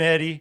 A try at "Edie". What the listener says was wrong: It's spelled like terrible. Eddie and it's pronounced like Edie. It's not that hard.